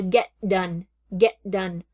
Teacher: the T and the D pull together